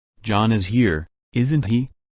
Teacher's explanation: If there is no auxiliary in the first part, do or does, or don't or doesn't, appears in the tag. A tag question, with falling intonation, indicates that the speaker thinks his statement is true. He expects the answer to agree with his statement.